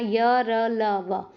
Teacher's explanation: जीभ जो है किसी भी भाग को नहीं छुएगी। आप बोल के देख लेना य, र, ल, व। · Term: अंतस्थ